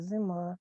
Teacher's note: В слові зима і наближається до е